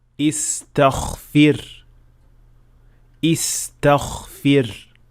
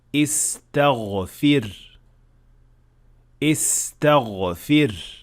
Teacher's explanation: some learners tend to make ghain also voiceless. The result is that it will sound more like kha rather than ghain